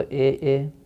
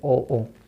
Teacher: तो कंठ तालव से ए, कंठ तालव से ए, और कंठोष्ठ से ओ। कंठ तालव से तो ए और कंठोष्ठ से ओ